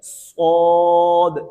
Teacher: ہے کہ سین باریک ہوتا ہے، صاد موٹا ہوتا ہے، تو صاد کو ادا کرتے ہوئے زبان کی جڑ کو اٹھائیں گے، یہ موٹا ہو جائے گا صاد